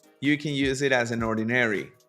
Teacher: No termino una palabra y ya estoy empezando la otra. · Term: Linking words